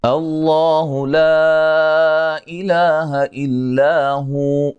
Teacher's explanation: لفظ اللہ کو موٹا ادا کریں گے، اس سے پہلے حرف پر زبر ہے، لا پہ مد جائز ہے، الا مد اصلی ہے، الا الف مدہ ہے، ہو جب وقف کریں گے یہ واو ساکن ہو جائے گی، واو مدہ کی شیپ بن جائے گی، ٹھیک ہے، ایک الف کی مقدار کے برابر لمبا کر کے وقف کریں گے۔